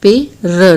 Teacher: ड़ का र में प्रयोग हो जाता है